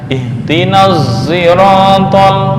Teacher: Zirata lakin yakunu sautus sad ghaliban ala sautis zai wa hadza fi qiraati Hamzah. Tetapi suara sad lebih mendominasi daripada suara za. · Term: ismam bis saut